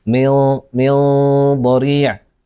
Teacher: الصاد او القاف او الطاء او الضاء او الظاء او الضاد هذه الحروف تكون عندها الغنه مفخمه